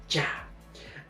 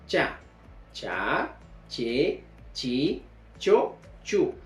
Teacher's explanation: el predorso de la lengua debe encorvarse y llegar a chocar a la zona del palatal. O sea que la lengua que está en esta posición se encorva y choca al palatal de la cavidad bucal.